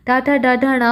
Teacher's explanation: जो टा वर्ग है, इनका उच्चारण मूर्धा से किया जाता है, मूर्धा का प्रयोग किया जाता है इनको उच्चारित करने के लिए।